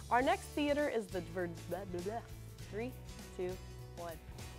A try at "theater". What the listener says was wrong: Do it again, it sounded like you said eater. Put one, it's a little bit like this.